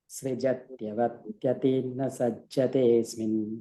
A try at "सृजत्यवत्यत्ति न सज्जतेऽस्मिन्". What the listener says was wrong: There is a double t, huh? Srujatyavatyatti yatti.